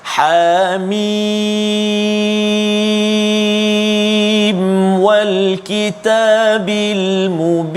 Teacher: Hamim kita baca ha 2 harakat, mim 6 harakat, mad lazim harfi mukhaffaf.